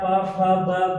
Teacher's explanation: ओष्ठ क्या होता है, जैसे प बोले फ, ब, भ, जैसे आप प, फ, ब बोल रहे हैं वैसे आपका ओठ एक दूसरे ओठ को स्पर्श करते हुए इन वर्णों को बाहर फेंक रहा है, जिसके कारण से इसे हम ओष्ठ ध्वनियां या ओष्ठ वर्ड कहते हैं, ठीक है।